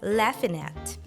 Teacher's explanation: the nasal sound at the end of laughing gets reduced to simple n and we pronounce the two words together laughing at hang on